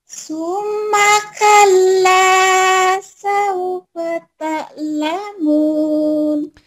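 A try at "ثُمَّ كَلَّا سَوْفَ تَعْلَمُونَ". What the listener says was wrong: Tinggal ainnya ta gitu, kurang keselak ta iya.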